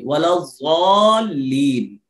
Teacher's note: زبان کی یہ نوک اوپر کے دانتوں کی جڑ میں نہیں لگنا چاہیے، یعنی دال کا تلفظ نہیں آنا چاہیے